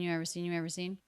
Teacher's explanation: because it's low in Pitch it's unstressed it's said quickly